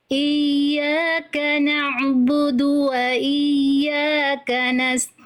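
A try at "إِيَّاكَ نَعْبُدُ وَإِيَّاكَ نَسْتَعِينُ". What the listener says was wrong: Oke, ain sukunya lebih santai lagi Bunda. Udah bagus, cuman jangan berlebihan. Iyyaka na'budu. Santai aja, dari tengah tenggorokan dialirkan sedikit. Iyyaka na'budu wa iyyaka nasta'in.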